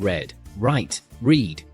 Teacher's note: the R sound is smooth and not rolled like in some other languages. Pull your tongue slightly back without touching the top of your mouth.